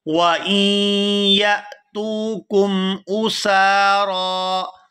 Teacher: یا کو حمزہ ساکن کے ساتھ ملائیں گے تو جھٹکے کے ساتھ ادا کریں گے